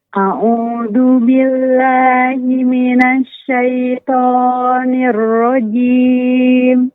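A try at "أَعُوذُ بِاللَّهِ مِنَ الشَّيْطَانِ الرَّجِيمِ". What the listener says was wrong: Ya, Ummu pada zanya digetarkan zu. huruf zanya dijelaskan, ya, digetarkan. A'udzu, zu. Tidak dipanjangkan Ummu.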